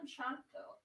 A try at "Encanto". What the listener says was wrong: No, it's a C, and in Spanish that's the K sound. Encanto. It is an O on the end, not an A. on the end of